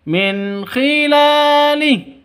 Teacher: Jadi nun mati bertemu dengan k. Jelas terang. Kenapa? Karena izhar halqi.